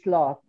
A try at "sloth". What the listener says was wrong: This is only one syllable. Not salot. No. This is wrong.